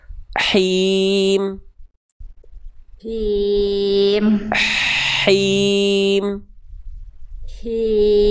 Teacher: bisikan lagi dari tengah tenggorokan, karakter nafasnya berbisik. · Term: hak kecil